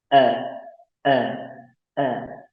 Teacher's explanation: tidak serta-merta kita seperti menyebutkan huruf Latin A terbuka lebar rongga mulutnya A, tapi yang benar tidak terlalu terbuka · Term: fathah